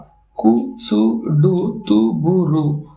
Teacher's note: கு சு டு து பு ரு என்ற இந்த ஆறு வல்லின உகரங்களும் சொல்லின் இறுதியில் வரும்பொழுது ஒரு மாத்திரைக்கு பதிலாக குறைந்து அரை மாத்திரை அளவை ஒலிக்கும் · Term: குற்றியல் உகரம்